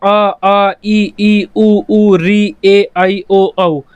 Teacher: जैसे आपका आ ई ऊ री ए आई ओ औ, इनमें हम बोलते हैं तो हवा कहीं भी टकराती नहीं है, गले से आती है और सीधी हमारे मुंह से बाहर निकल जाती है। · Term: स्वर